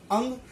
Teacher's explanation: अंग को यह ध्वनि नाक से निकलती है, पर यह अ के सहारे बोली जाती है। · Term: अनुस्वार